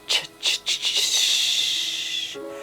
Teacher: The ch is the same place as the sh.